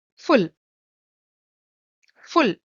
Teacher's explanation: We are saying ooh, but a shorter one.